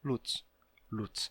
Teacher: E quando você tem luce, aí vai se sonorizar para luze, vai perder a vogal final, depois fica só luz. E depois de luz, se dessonoriza, né? Porque esse som de dz no final da palavra é ruim de pronunciar, né?